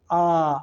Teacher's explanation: विवृत स्वर का मतलब होता है उच्चारण में मुख सबसे अधिक खुला रहता है